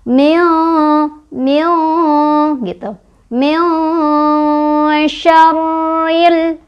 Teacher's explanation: si lidah kita sudah bersiap-siap ke huruf shin sama didengungkan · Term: ikhfa